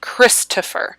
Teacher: when people give christopher a nickname they almost always say chris because it is the stressed syllable the other two are unstressed